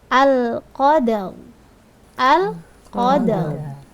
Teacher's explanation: At-tafkhim adalah tebal. Jadi cara membaca ro tafkhim yaitu mencucu ya.